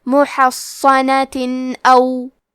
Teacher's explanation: پھر حرف الالف آتا ہے کلمت او. الف حروف الاظہار میں سے ہے تو ہم یہ حکم کو بغیر غنہ سے ادا کریں گے